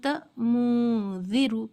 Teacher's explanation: ज़बान की नोक ऊपर के तालु को टच नहीं करनी है, आवाज़ को नाक में थोड़ी देर रोक कर पढ़ना है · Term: इख्फा